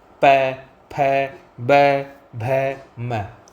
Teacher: वहीं बात करें हम प वर्ग की, तो प वर्ग दोनों होठों के मिलने के बिना बोल ही नहीं सकते। प बोलोगे तो आप दोनों होठ आपस में मिलेंगे। प, फ, ब, भ, म टच होते हैं।